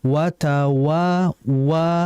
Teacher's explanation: jangan wa itu kayak tebal. Jadi harus ditipiskan